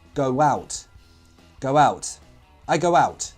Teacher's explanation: Between the words go and out, again a w sound would intrude. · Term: intrusion